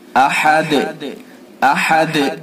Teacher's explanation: دال کو جب ہم دال کے اوپر وقف کریں گے احد، تو یہ دال ساکن ہو جائے گا، اور دال ساکن ہو جائے گا تو اس کے اندر قلقلہ کیا جائے گا۔